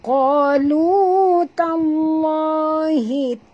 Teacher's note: Lam pada lafaz nama Allah, dibaca tebal.